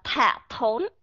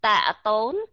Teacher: âm th thổi hơi ra còn âm t không thổi hơi ra